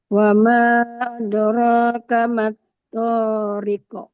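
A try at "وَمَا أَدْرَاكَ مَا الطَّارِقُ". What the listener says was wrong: Wamaknya sama 4 juga. Nah, ini toknya kepanjangan lagi. ada ro sama tok panjangnya sama wi.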